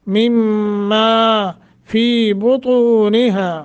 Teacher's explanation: کم کے بعد میم مشدد ہے، غنہ کریں گے